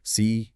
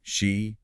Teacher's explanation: tongue tip near the ridge behind your teeth. Lips relaxed and the she sound tongue further back. Lips a bit rounded.